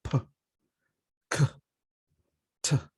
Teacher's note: it is a strong puff of air that comes out of our mouth, like p, k, t. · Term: aspiration